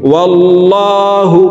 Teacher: লাম বলে পড়ব অর্থাৎ মোটা করে পড়ব · लाम जबर वाल लम खरा जबर ला हा पेश हु ওয়াল্লাহু আল্লাহ শব্দের আগের হরফে জবর আছে এই কারণে এই লামকে ল বলে পড়ব অর্থাৎ মোটা করে পড়ব